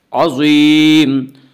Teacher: عظیم ضا حروف مستعلیہ میں سے حروف مستعلیہ ہمیشہ 7 ہیں جو ہمیشہ ہر حال میں پر پڑھے جاتے ہیں، اس لیے ضا کو یہاں پر پڑھیں گے۔ عظیم یا مدہ ہے، اس کا قاعدہ یہ یا مدہ اس یا کہتے ہیں جو یا ساکن ہو اس سے پہلے زیر ہو، یا مدہ کو ایک الف کے برابر کھینچ کر پڑھیں گے۔